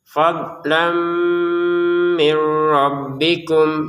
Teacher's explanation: Kalau kita sambung, maka tanwinnya kembali lagi menjadi tanwin bertemu dengan mim dimasukkan dengan dengungan